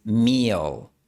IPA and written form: mi.əɫ (meal)